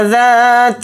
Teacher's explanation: ذال کے ساتھ الف مدہ ہے، ذال الف زبر ذا کو تھوڑا کھینچ کر پڑھیں گے